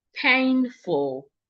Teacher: The word has two syllables which means I'm stressing the first syllable.